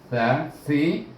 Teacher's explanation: Kemudian tha baris bawah bunyinya si, itu belakang hujung lidah bertentangan gigi kecil,